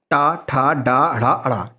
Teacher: इनका उच्चारण मूर्धा से होता है यानी ऊपर वाली छत के टकराने से होता है। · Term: मूर्धन्य